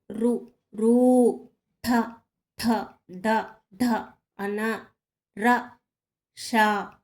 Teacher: మూర్తన్యములు నోటి పైభాగం నుంచి పుట్టినవి ఋ ఋ ఠ ఠ డ డ అన ర ష అనేవి మూర్తన్యములు